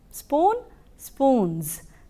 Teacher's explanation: Z sound is produced when you use a plural for spoon.